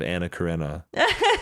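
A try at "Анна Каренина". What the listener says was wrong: Karenina. Karenina. Karenina. No, it's not Karenina. It's Karenina. You're missing a syllable. Yeah, so her husband is Karenin, and she's Karenina.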